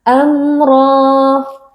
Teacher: Cara membacanya adalah dengan membaca bunyi mim sukun dengan jelas tanpa gunnah yang dipanjangkan. Amra. Ra huruf tebal, kita angkat pangkal lidah. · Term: izhar syafawi